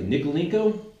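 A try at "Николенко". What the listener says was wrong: Nikolenko, actually. The stress is in a different place, but that's fine.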